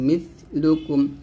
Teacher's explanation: জিব্বাটা উপদাতের আগার সঙ্গে লাগিয়ে পাতলা উচ্চারণ করবেন